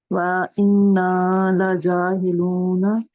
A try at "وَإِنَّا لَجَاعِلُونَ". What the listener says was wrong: وَإِنَّا لَجَاعِلُونَ. عین ہیلون نہیں ہے.